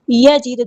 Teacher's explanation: دال ساکن ہے کلکلا ہوگا